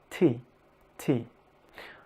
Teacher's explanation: And try to pronounce in English T. Notice how your tongue is clicking right up on the palate at the top of your mouth.